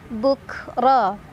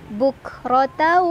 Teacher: Ra dibaca secara tafkhim karena berbaris di atas atau fathah, jadi dibaca tebal.